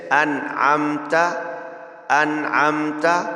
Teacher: یاد رہے نون ساکن ہے، اس کے بعد حروف حلقی میں سے عین آیا ہے، اور عین حروف حلقی میں سے ہے، لہٰذا یہاں غنہ نہیں کریں گے. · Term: اظہار حلقی